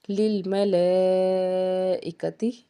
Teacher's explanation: للملائکتی، یہاں پہ جو مد ہے وہ مد متصل ہے، اس کو 3 سے 5 الف کے برابر ہم کھینچ کے ادا کر سکتے ہیں